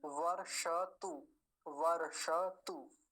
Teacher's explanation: मूर्धन्य शकार और रेफ देखिए फिर से आया तो वर बोलेंगे, वर्षतु। मूर्धन्य शकार को भी पूरा रखेंगे, वर्षतु नहीं बोलेंगे।